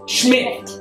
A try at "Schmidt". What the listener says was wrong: with a T. Not TH. just do Schmidt, like SMIT. T.